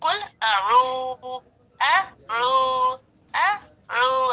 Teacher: अ को लाइटली कहा हमने, और रू कहते वक्त आवाज मोटी हो रही है